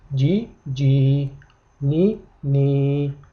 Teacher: Demak, qoida quyidagicha kasradan soʻng sukunliya kela, demak mana shu yerda i tovushi ikki harakat miqdorida choʻziladi